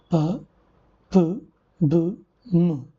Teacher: the active articulator is the lower lip and the passive articulator is the upper lip · These sounds such as p in pen, p in book, m in man are produced with the help of both the lips, and they are coming together, as you can see. Okay, it's an interaction between the upper lip and the lower lip resulted into production of bilabial sounds such as p, p, b, m.